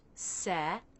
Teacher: The word second begins with the S consonant sound. Then the E as in bed vowel, so the jaw has to drop a good bit.